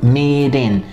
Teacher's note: a gente tem a linkagem da palavra meet, termina com T, só que esse T a gente pronuncia com flap T